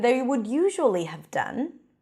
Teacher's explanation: I stress the word usually to emphasize that that wouldn't have been the case unless they were feeling these feelings, probably stress, nervousness, peering about nervously.